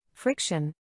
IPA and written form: ˈfrɪkʃən (Friction)